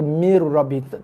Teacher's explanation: bacaan nun diabaikan, lompat skip terus kepada huruf ra berserta dengan tekanan pada ra sebab ra bersabdu. Mir, bacaan nun dihilangkan. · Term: nun mati jumpa ra